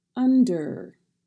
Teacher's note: the DER at the end of the word does not have a vowel sound when you say it